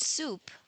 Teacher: there is no vibration of the vocal cords. This is why this sound is regarded as voiceless alveolar fricative